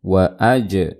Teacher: ada jim sukun dibaca qalqalah, dipantulkan suara jimnya, wa'aj.